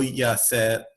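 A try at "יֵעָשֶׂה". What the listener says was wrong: I don't think it's Yaseh. It's a Tzera under the Yud. Yeoseh.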